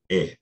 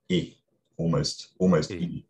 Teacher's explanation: you go to Northern England and you find pronunciations that are just eh, but tenser